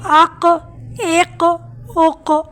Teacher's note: कलकला की आवाज पलट कर वापस आती है